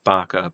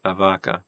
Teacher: But it's fully possible that to a Goth, d and the would just be the same sound, and pronouncing b as v after a vowel in a preceding word would be as natural as to a Goth as a Spaniard saying vaca, but a vaca.